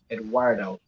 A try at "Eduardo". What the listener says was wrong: You're not saying it wrong. You're adding a W instead of the U. So that's why Eduardo.